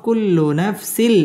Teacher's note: এটা হচ্ছে বেলাগুন্না গুন্নাহ ছাড়া পড়তে হবে